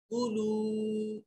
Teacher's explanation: क़ुलू में वाव साकिन है और उससे पहले वाले हर्फ के ऊपर पेश है, वाव मद्दा है, एक अलिफ के बराबर लंबा करेंगे।